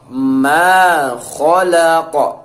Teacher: Ma-nya dua harokat ya teman-teman